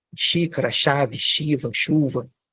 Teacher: ele é um s palatal